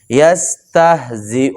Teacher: اور یہ سین ہے، اس کو سین کو ادا کرتے ہوئے سیٹی کی آواز آنی چاہیے